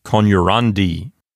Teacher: the penult is a long syllable, and so it will keep the accent for itself. It will not go back to the antepenult.